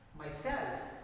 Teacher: the extra force in the second syllable is prominent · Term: stress